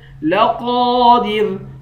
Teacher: قاف کے بعد الف ہے، الف حروف مدہ میں سے ہے، اس کو 1 الف کی مقدار کھینچ کر پڑھیں گے ، قاف اور را دونوں کو موٹا پڑھیں گے، لقادر یوم